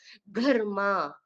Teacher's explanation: கர்மா அந்த க வந்து கொஞ்சம் ஹார்டா ஏர் வெளியில வர மாதிரி உச்சரிக்கணும்.